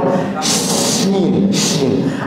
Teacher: শিন অক্ষরে যদি আসেন, তো শিন অক্ষরটাকে আরবি ভাষায় অক্ষর সমূহের মাঝে হরফুত তাফাসসি বলা হয়। হরফুত তাফাসসি মানে যে অক্ষরটা উচ্চারণের সময় শব্দের আওয়াজটা ছোট ছোট ছিদ্র দিয়ে বের হয়ে যায়। যেমন শিন, শিন, আমার জিহ্বা দাঁতের ছোট ছোট ছিদ্র দিয়ে উচ্চারণ বের হয়ে আসছে।